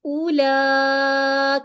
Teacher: بڑی والی مد ہے, تو اس کا مطلب ہے 4 to 5 کاؤنٹ یہاں پر بھی ہم کرتے ہوئے آگے جائیں گے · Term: الف مد